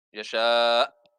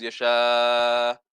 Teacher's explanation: If you stop there, there's glottal stop at the end. Yasha. The hamza has to be pronounced at the end.